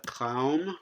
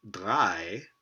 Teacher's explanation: So looks like voicing is contrastive before a sonorant consonant.